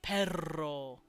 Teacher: that trilling noise that you hear in Spanish specifically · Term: trills